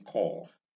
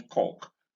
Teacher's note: Vowel number 7 is a mid-back rounded long vowel. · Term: long form of this one